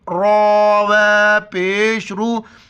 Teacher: کی مقدار کھینچنا ہے، واو کو لام کے ساتھ ملائیں گے، را کو موٹا کر کے واو کے ساتھ ملائیں گے